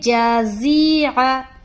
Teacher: جیم کا مخرج ہے زبان کا بیچ اور اس کے مقابل اوپر کا تالو · زا جو حرف ہے یہ سختی سے اور سیٹی کی طرح ادا ہوتا ہے. زا کا مخرج ہے زبان کی نوک اور ثنایا سفلا کا کنارہ، اور کچھ حصہ ثنایا علیا کا بھی ٹچ ہوتا ہے.